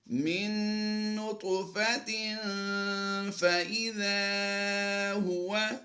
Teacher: فا حروف اخفا میں سے ہے، تو ہم یہاں پر غنہ کر دیں گے اور یہ غنہ زمانی کی آواز ہوگی۔